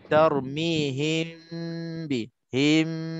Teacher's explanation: Him, pelan-pelan kita sembunyikan ke dalam huruf ba itu. Itu cara untuk ikhfa.